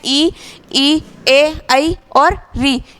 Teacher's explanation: इसके बाद में अगला भेद है जिह्वा की क्रियाशीलता के अनुसार। अग्र स्वर, जिसमें जिह्वा का अग्र भाग या आगे वाला भाग जो क्रियाशील रहता है